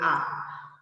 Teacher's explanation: নিম্নের একটা উচ্চারণ আছে স্বর আ, যেটা কেন্দ্রীয় ওষ্ঠাধর বিবৃত